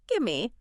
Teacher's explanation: The V in give often sort of blends into the M of me.